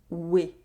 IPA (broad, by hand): we